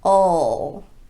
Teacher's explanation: you have to use the dark L sound, which includes that slight vowel sound in front of it.